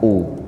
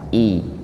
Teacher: Kalau dhammah itu dengan dimonyongkan u. Kalau kasroh dengan dilebarkan i.